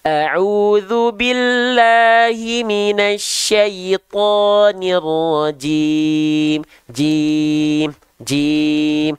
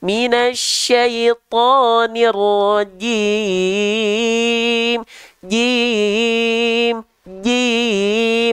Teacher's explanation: jim bukan Ci itu ya jangan sampai keluar percikan-perecikan nafas karena huruf Jim enggak punya sifat hams tapi huruf Jim itu memiliki sifat yang disebut dengan jahr